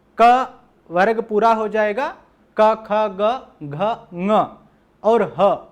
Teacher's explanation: क ख ग घ ङ और ह, और विसर्ग का उच्चारण स्थान जो है वो कंठ से होता है